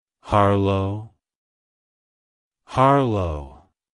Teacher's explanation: emphasize the first syllable H-A-R and pronounce the second syllable low with a soft O sound. Avoid emphasizing the second syllable.